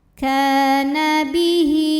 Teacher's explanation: Kana bihi, mad silah qasirah karena ada hak dhamir yang diapit 2 huruf hidup, huruf setelahnya selain hamzah, maka hak dhamirnya panjang 2 harokat